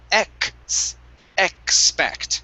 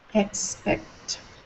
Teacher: instead of saying expect with only an s we need a k sound as well